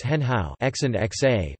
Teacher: if two dipping tones occur in a row, the first becomes a rising tone, indistinguishable from other rising tones in the language. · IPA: [xɤn˧˥ xaʊ˨˩˦]